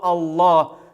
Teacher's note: твердо единственным исключением в классическом литературном арабском языке языке корана является слово алла которая произносится через твердую л